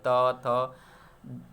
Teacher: जीभ और दांत जो है ना वो सटता है तो त का साउंड आता है, देखिए ध्यान से, दंत से।